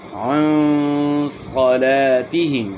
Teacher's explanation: الَّذِينَ هُمْ عَنْ صَلَاتِهِمْ، ہم میم ساکن میں اظہار ہوگا، غنہ نہیں ہوگا. یہاں اخفاء ہوگا، غنہ اخفاء کے ساتھ ایک الف کی مقدار کے برابر